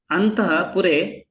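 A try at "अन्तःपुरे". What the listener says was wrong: Here, no, don't do full visarga. Go Antapure.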